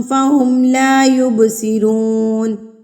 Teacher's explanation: یب پہ بھی ہم قلقلہ کریں گے کیونکہ با ساکن ہے